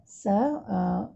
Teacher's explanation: Huruf sin berbaris atas, kita sebut sa. Sa, dia punya makhraj hujung lidah sentuh belakang gigi kacip bawah. Jadi kita kena zahirkan dia punya sifat rokhawah dengan sifat sofir dia.